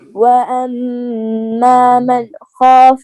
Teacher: حروف حلقی آگے ہے نا، تو یہاں غنہ نہیں ہوگا، اظہار ہے